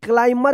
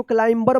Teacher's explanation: तो देखिए क्लाइमर पढ़ेंगे, इसको क्लाइंबर मत पढ़िएगा, B साइलेंट रहेगा।